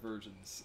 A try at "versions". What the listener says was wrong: No, you said versions, but it sounds like virgins.